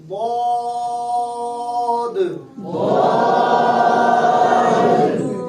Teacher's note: یہ زبان کی کروٹ سے ادا ہوا